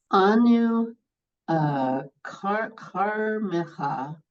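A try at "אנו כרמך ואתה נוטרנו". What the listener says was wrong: it's a chak rather than a kaf, Charmecha.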